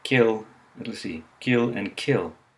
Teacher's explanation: the phoneme k in English is followed by a small puff of air, indicated in IPA by a superscript h